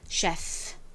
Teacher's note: 이렇게 단어 속에서 ch가 취나 크 발음이 아니라 쉬 발음이 나는 경우는 비교적 적은데요. 보통 원어가 프랑스어에서 온 단어에서 이 ch가 쉬의 소리가 납니다. 이 셰프도 사실은 프랑스어인데 그 프랑스어 단어를 빌려와서 영어에서 쓰는 거거든요.